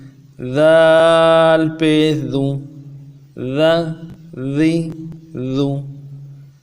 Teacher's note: ذال کو ادا کرتے ہوئے زبان کا سرہ اور سامنے والے دانتوں کے سرے سے ادا ہوگا تو یہ ذال ادا ہوگا،